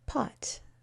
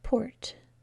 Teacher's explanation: when I add the r after the o we can't make that ah sound